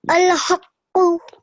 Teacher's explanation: when he came to the qaf, he actually did press down on it and spent a touch longer